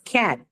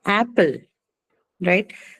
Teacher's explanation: So the word begins with the sound A, the low front vowel.